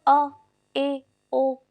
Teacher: ऐसा भी नहीं है कि मुंह नहीं खुल रहा है, ऐसा भी नहीं है पूरा खुल रहा है, आधा मुंह खुलता है, उसको बोलते हैं अर्धविव्रत।